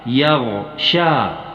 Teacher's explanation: اس شین کے بعد یا یہ مجہول ہے، اس یا یہ مجہول کو چھوڑ دینا پڑتا ہے، اور اس کے بعد ہے ہا پیش کے ساتھ، ہا پیش ہو، یغشاہ۔